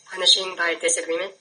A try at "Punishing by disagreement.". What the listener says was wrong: Are you asking me or are you telling me? Okay, so state it again so you're telling me and not asking me a question.